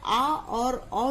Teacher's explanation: आ और अ जो है विवृत स्वर के अंतर्गत आते हैं